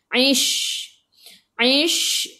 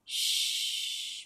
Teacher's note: Shin sifat hurufnya tafashi, kena hambur.